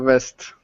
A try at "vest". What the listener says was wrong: It sounds better, but I heard the first time it sounded like a west. I want to hear a strong vest. Put your fingers here. In the external notch, which is this little groove here, right?